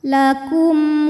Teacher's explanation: mim sukun menghadapi huruf selain mim dan ba yaitu w maka mim dibaca jelas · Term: zhar syafawi